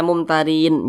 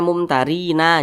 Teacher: nun huruf nun tidak dibaca panjang kita berhenti pada huruf nun maka huruf nun harus kita sukunkan atau kita matikan